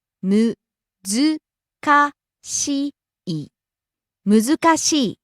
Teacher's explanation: rising on the second syllable zu and coming down on the last syllable i.